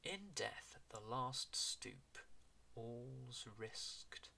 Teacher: If you want to say that, enunciating all the consonants, it's quite hard work. So we've got a double th, we've got th and th in death, the, with a comma in between, and then we've got the last stoop.